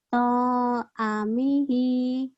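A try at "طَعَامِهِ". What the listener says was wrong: Ainnya panjang. To'a gitu.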